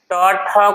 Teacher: ट ठ को कहते हैं ट वर्ग। और फिर इस का उच्चारण कहां से होता है? मूर्धा से होता है।